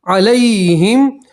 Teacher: لام کے ساتھ یائے لین ہے اس لیے کھینچیں گے نہیں